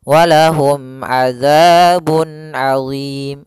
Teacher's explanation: disebabkan sukun Arid maka kita namakan dengan Mad Arid lisukun panjangnya yaitu boleh dua harakat boleh empat harakat dan boleh enam harakat